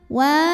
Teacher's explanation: karena ada W yang barisnya fathah panjang cara membacanya dipanjangkan W ini dua harakat saja